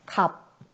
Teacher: 갑, 비읍, 시읍이라는 겹받침이지만 자음군이지만 시옷은 탈락하고 비읍만 발음된다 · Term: 자음군 단순화